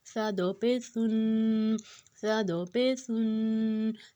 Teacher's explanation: اب جو سا ہے وہ نرم والا حروف ہے، اس کو ہم نے اوپر اور نیچے کی دونوں دانتوں میں زبان کی نوک کو لانا ہے، تو یہ نرمی سے ادا ہوگا